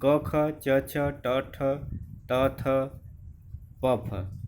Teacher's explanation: अघोष जिन ध्वनियों के उच्चारण में स्वर तंत्रियों में कंपन न हो। हर वर्ग का पहला और दूसरा व्यंजन यानी क ख च छ ट ठ त थ प फ, ये सारे के सारे व्यंजन अघोष होते हैं, यानी उनको उच्चारण करने में स्वर तंत्रियों में कंपन नहीं होता है।